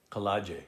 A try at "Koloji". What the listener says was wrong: No kala. Koloji.